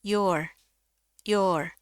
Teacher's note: tulisannya pakai J di IPA tapi ini bunyinya I kalau di bahasa Indonesia